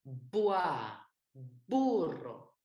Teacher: B, celui-là, il est avec les deux lèvres. On claque les deux lèvres.